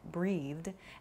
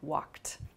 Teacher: a soft D sound like breathed and then a more hard T sound like walked